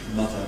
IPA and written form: ˈmʌðə (mother)